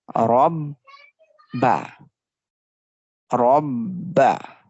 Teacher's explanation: Ra with Fatha, so we make the Ra sound bold